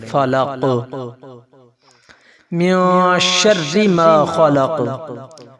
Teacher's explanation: نون ساکن ہے تو یہاں پہ ہم اخفا کریں گے، نون کی آواز کو ناک میں لے کر جائیں گے۔